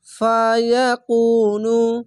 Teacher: পেশের পর অসাকিন 1 আলিফ টেনে পড়বেন।